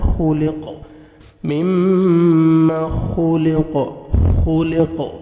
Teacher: قاف جب سٹاپ کریں گے تو ڈبل ساؤنڈ آئے گا